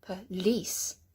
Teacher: Can you hear I'm emphasizing the lease? Police. And so the p tends to be much softer.